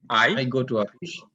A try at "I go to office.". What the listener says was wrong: আই। আচ্ছা, গো এর উচ্চারণটাকে আর একটু সুন্দর করে করতে পারি, I গো to office, right?